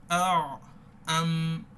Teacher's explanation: নাকের গুন্না আওয়াজটা জারি থাকে, যার ফলে এখানে পুরোপুরিভাবে মিমে কি হয়ে যায় না, বায়ের মতো আওয়াজটা বন্ধ হয়ে যায় না।